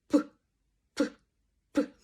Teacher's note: звук п - це теж вибуховий звук тут працюють активні наші губи бо Працюють як ти на нашій щоки працюють активно наші губи